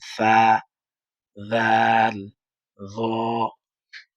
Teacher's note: আপনি লাগান জিবার আগাটা সামনের উপরের দুইটা দাঁতের সাথে